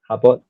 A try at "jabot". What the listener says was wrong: For that particular word, if it's a French word, it'd be jabot. The T is not pronounced, and then the J has more of the J sound.